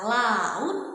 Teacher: dia aliran udaranya lateral itu dia keluar di melalui sisi ya melalui kedua sisi lidah ya. Oleh karena itulah itu disebut sebagai bunyi lateral.